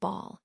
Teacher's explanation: The B sound is a voiced bilabial stop, which means you bring your lips together and then release a burst of air, like in the word ball